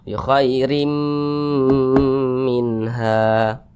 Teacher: ro dibaca tipis karena dia berbaris ke bawah